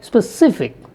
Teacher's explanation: if you take a word like specific the second syllable is stressed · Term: word stress